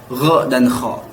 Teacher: Sedangkan di adnal halqi, tenggorokan terdekat dengan lidah, keluar 2 huruf yaitu gho dan kho